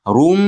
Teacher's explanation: ro ustidagi tanvinda mim ichiga kirgizamiz. Rum, ushlab turamiz. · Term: g'unnasini